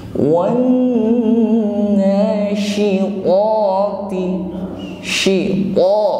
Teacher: huruf qa ini adalah huruf tafkhim, tebal bunyinya, itbaq sifatnya po, dan tidak memiliki sifat hamas, tidak disertai dengan nafas yang mengalir ya, tidak lemah.